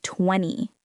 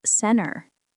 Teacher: The T just disappears in these words.